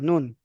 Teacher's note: নুন আর লামের মাখরাজ কিন্তু একই। জিভের আগা তার বরাবর উপরের তালুর সাথে লাগিয়ে উচ্চারিত হয়। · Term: নুনের মাখরাজ